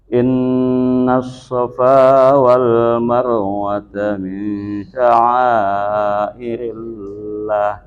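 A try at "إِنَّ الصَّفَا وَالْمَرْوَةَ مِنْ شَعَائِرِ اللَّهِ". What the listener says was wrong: Lahnya panjangin aja Pak. Min sya'airillah. Jangan irillah, maksudnya panjangin lah. Min sya'airillah.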